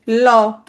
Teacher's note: ল উচ্চারণের সময় জিভের পাশ দিয়ে কিছু বাতাস বের হয়ে যায় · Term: পার্শ্বিক ধ্বনি